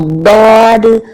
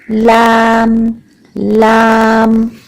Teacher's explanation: दौद के लिए हमने जबान का पीछे का हिस्सा इस्तेमाल किया और लाम के लिए जबान का आगे का हिस्सा इस्तेमाल किया। और दौद पीछे पूरा पूरा अंदर से मुंह भरा हुआ लग रहा है, और दौद, और लाम के लिए सब आगे की तरफ लाम लाम।